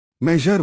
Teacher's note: Measure voiced fricative post-alveolar